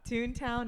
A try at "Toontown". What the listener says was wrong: So I don't even think you pronounce it right. Toontown. I thought you were like Toontown, like super quick.